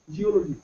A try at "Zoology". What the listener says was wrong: No, geology नहीं है. पहले G कहाँ आ रहा है? Z आ रहा है. Zoology. लिखते तो ऐसे ही, बोलना भी आना चाहिए.